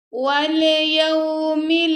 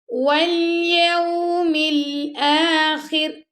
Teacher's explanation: ہم نے لام پر کلکلا بالکل نہیں کرنا